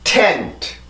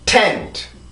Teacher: T 발음이 강세 음절의 시작이죠. 그럼 이렇게 발음이 돼요. 그 혀를 눌러줘야 됩니다. 강하게 힘을 줘야 돼요.